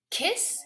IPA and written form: kɪs (Kiss)